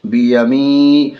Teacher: یا ساکین ہے، یا ساکن سے پہلے زیر ہے، یا مدہ ہوگی، یا مدہ کو تھوڑا کھینچ کر پڑھیں گے بیمی، نون زیر نی، نون کے نیچے زیر ہے، زیر کو جلدی پڑھیں گے، تھوڑا بھی نہ کھینچیں گے، زیر کی آواز نیچے کو جاتی ہے۔